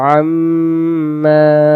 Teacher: গতে গুন্না, গুন্না করব মিমে তাসদিদ, এবং জবর বামে এখানেও আলিফ অক্ষর, আমরা জবরটাকে আমরা এক আলিফ টান দেব